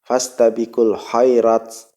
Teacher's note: huruf ta itu apabila mati, maka dia harus hamas. Hamas itu apa? Ada keluar nafas sedikit, angin sedikit di antara gigi seri kita.